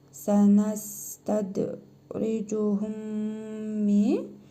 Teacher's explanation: Sonra yenə mim hərfi gəlib, idğam-ı misleyn məyal qunna qaydasına görə cəzmli mim hərfini burnumuzda tələffüz edərək bir əlif miqdarı uzadırıq. Bu mim hərfinə isə şəddə verərək oxuyuruq.